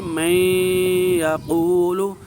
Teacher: یہ نون کی کچھ نہ کچھ ادائیگی ہو رہی ہے، چونکہ اس کی صفت کچھ ادا ہو رہی ہے، اس لیے اس کو ادغام ناقص کہیں گے